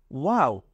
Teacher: দুই ঠোঁটের মাঝখান থেকে ওয়াও এটা উচ্চারণ করতে হয়